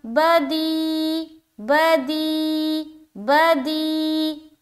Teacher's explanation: یا ساکن آ گیا اور یا ساکن سے پہلے زیر آ گیا، تو یہاں پر ہو گیا یا مدہ کا قاعدہ، لہٰذا یہاں پر ہم کھینچیں گے